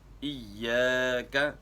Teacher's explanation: یا کو ہم کھینچیں گے، ساتھ الف پڑھا جائے گا، اگر نہیں کھینچیں گے تو الف ختم ہو جائے گا، ایاک۔ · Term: الف مدہ